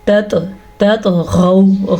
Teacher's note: طوا پہ ساکن آیا تو یہاں پہ ہم جھٹکا دیں گے، اس جھٹکے کو کلکلا کہتے ہیں